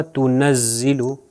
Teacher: وہ نون کی آواز جو ہے وہ ناک سے بھی ادا ہو رہی ہے. اگر اس کو چیک کرنا ہے تو آپ ناک بند کر کے دیکھ سکتے ہیں. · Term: غنہ